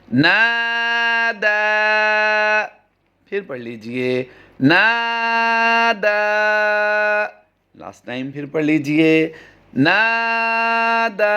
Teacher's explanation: دوسرا لفظ ہے نادا، نون کو بھی لمبا کریں گے کیونکہ یہاں پر الف مدہ کا قاعدہ ہوتا ہے، اور دوسرا دال کھڑی زبر دا ہے، آگے یا خالی ہے تو الف مقصورہ کا قاعدہ ہوگا۔